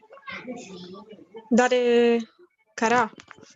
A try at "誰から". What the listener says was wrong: Good. Exactly.